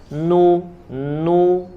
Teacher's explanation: huruf nun ya dengan tingkatan yang paling rendah paling sedikit masuk ke dalam hidungnya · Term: gunah